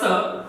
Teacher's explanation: इस स का जब उच्चारण हो तो जीभ दांतों को स्पर्श करती हुई इस व्यंजन का उच्चारण होता है, तो इसे हम कह सकते हैं दंत्य सकार।